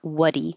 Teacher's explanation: So now the D connects to the E and it will sound like what'dy.